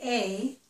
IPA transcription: eɪ